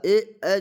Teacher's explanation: कंठ तालु से बोलाता है, मिलके बोलाता है कंठ तालु से। कंठ तालव्य आपको ऑप्शन में मिलेगा, कंठ तालव्य।